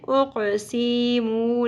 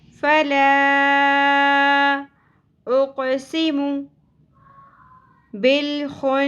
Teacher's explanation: دونوں سین اور میم کی سنگل حرکات کو زیادہ نہیں کھینچنا ہے. اقسمو نہیں پڑھنا.